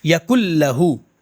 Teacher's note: اسی طرح یکن لہو تھا تو کیا کر دیں گے، یکل لہو پڑھیں گے، یکن لہو نہیں پڑھیں گے بلکہ نون کو لام میں داخل کر دیں گے، یکل لہو. رکیں گے نہیں زیادہ، میں سمجھانے کے لیے بتا رہا ہوں، یکل لہو ہے نا.